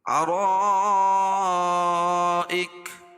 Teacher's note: علی الارائک را پور ہوگی کیونکہ را کے اوپر زبر ہے، را پر زبر یا پیش ہو تو را کو پور پڑھیں گے. ارائک تو یہاں مد متصل ہے، کیوں کہ حمزہ اسی کلمے میں ہے. قاعدہ ہے کہ حروف مدہ کے بعد اگر حمزہ اسی کلمے میں ہو تو مد متصل ہوتا ہے، اس میں طول فی توسط فی القصر، اور مد متصل کو مد واجب بھی کہتے ہیں.